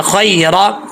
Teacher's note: خی، اس کو خے نہیں پڑھنا، خیرہ، را کے اوپر زبر ہے، پر پڑھا جائے گا یعنی موٹا پڑھا جائے گا